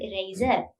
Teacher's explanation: If you pronounce the word eraser, R is silent. So generally in standard English or in British English, this R is silent.